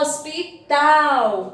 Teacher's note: Na palavra hospital, a sílaba forte é a última, né? Porque a primeira sílaba é os, a outra é pi e a outra é tal.